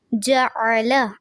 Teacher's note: جعل عین بھی واضح رہے گا اور لام کی زبر کو لمبا نہیں کرنا